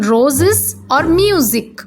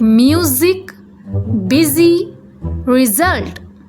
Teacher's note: Sometimes S sounds like Z, especially between vowels, as in roses or music. Here, the S takes a buzzing sound, like music, busy, result